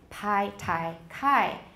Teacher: P, T, and K, if they're the first sound of the syllable, they are definitely aspirated.